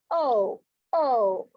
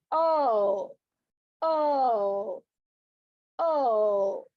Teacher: The glide begins from back open position and proceeds towards receded pronunciation oo. The lips are unrounded in the beginning and rounded in the end.